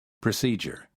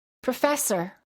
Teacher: the first syllable is reduced, and the PRO sounds like pr.